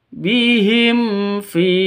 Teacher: hukum mim mati bertemu dengan fa bacanya jelas terang karena izhar syafawi bukan ikhfa syafawi tapi izhar safa syafawi jelas bacanya tidak boleh disentak Tidak boleh dipanjangkan.